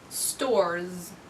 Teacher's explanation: The last sound is a voiced consonant, so I'm going to add the z ending.